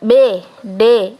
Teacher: itu kan pita suaranya itu kan ikut bergetar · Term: konsonan bersuara